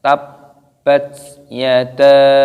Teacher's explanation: dibaca mad jaiz munfasil, dipanjangkan 5 ketukan